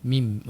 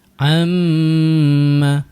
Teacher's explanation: Makhrajnya di bahagian bibir perlu rapat kedua bibir kita untuk huruf mim. >> Mim. >> Ha jadi rapat dulu kemudian baru dengung.